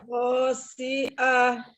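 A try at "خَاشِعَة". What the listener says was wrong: Pendek, pendek semua. Khosyi'ah. Pokoknya jangan diayun ya. Khosyi'ah, tidak jangan khosyi'ah. Memang enak ya ngayun huruf pertama itu memang enak ya, tapi ketika pendek jangan, tidak boleh ya, harus betul-betul pendek. kho ya, kho hurufnya bukan kho, kho dari tenggorokan bagian atas. Khosyi'ah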